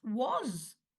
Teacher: You can hear the w in it, but you don't hear an ah, you hear and or o. And you don't hear a s, you hear a z.